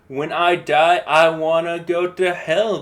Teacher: it's really common in rap and a lot of our poetry but it's weak strong.